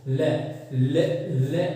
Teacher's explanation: पार्श्विक ध्वनि कहते हैं। ले के उच्चारण में ले जिह्वा मसोड़ों के पास जाकर फैल जाती है और जो वायु रहती है वो दोनों मसोड़ों के पास से यानी कि पार्श्व से होकर गुजरती है